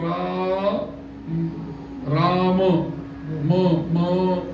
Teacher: आपण म्हणतो त्यावेळेला काय होत ओठ काय होतात बंद बंद होतात तोंड बंद होतं आणि ओठ मिटतात ते एकमेकांशी संलग्न होतात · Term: मकाराचा उच्चार